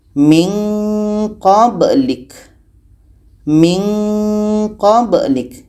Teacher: ini ada nun mati bertemu qa ikhfa ab'ad jadi ini menghasilkan bunyi nga